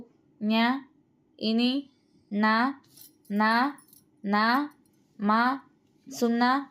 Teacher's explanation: నాసిక అంటే ముక్కు నాసిక స్థానముగా గల అక్షరములకు నాసిక్యములని పేరు